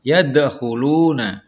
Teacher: Kemudian dal yang disukun, yadkhuluna, ya. Huruf dalnya itu memantul tipis. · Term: qalqalah sugro